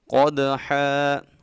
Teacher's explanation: قاف کو خوب موٹا پڑھیں گے اور دال میں کلکلا کریں گے، یعنی آواز کو ہلا کے پڑھیں گے